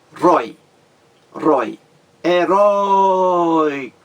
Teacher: Temos aí um ditongo aberto tônico, mas não é mais acentuado graficamente. Não leva mais o acento agudo.